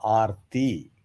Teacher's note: So Arti means the ta is soft. Alpa prana, Arti.